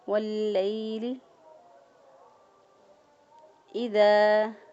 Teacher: ذال کو نرمی اور مد کرتے ہوئے اس کو ادا کریں گے، کیونکہ دال سے آگے الف ہے، یہ الف مدہ ہے، الف سے پہلے والے حرف پر زبر ہو تو وہ الف مدہ ہوتا ہے۔